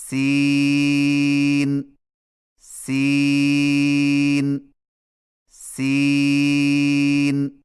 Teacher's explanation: سین کی ادائیگی میں زبان کی نوک کو ثنایا سفلی کے کناروں سے مضبوطی سے لگا کر باریک اور سیٹی جیسی آواز میں پڑھیں